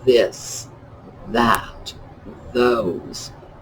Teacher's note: the th sound in particular it is a voiced dental fricative